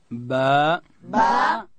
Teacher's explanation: اوس حرف با ده، دا به د دواړو شونډانو د مشلیدو څخه ادا کوو، د لندې حصې څخه. داسې به وایو با.